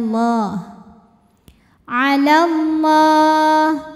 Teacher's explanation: bunyi sehingga kalau wasal lam enggak punya Alif jadi pendek alallah lam jalalah dibunyikan secara tafkhim sebab huruf sebelumnya berbaris fathah maka dibacanya tebal bunyinya